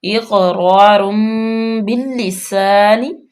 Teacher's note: تنوین کے بعد با آ گیا تو یہاں پہ اقلاب کا قاعدہ لاگو ہوگا، نون کی آواز کو میم میں بدلیں گے ، ٹھیک ہے، تو یہاں پہ غنہ بھی کریں گے، اقرار · یہاں پہ غنہ بھی کریں گے، اقرار باللسان، یہ لام، یہ با کو لام میں ڈائریکٹ ملائیں گے اور لام مشدد بھی ہے، سختی کے ساتھ پڑھیں گے، س